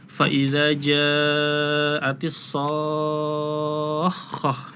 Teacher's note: Fa idza ja'atis shakhah ya. Jadi harus sampai 6 harokat dulu. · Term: mad lazim musaqal kalimi